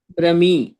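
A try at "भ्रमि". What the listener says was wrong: భ్రమి, అంతే. దీర్ఘం రాదని చెప్పిన మళ్ళీ దీర్ఘం పట్టుకొని కూర్చుంటే ఎట్లా? సో భ్రమి.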